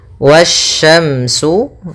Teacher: yang mana alif lam dan Alif dan lamnya tertulis akan tetapi Alif dan lamnya tidak dibaca sehingga kita langsung baca ke huruf setelahnya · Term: alif lam syamsiah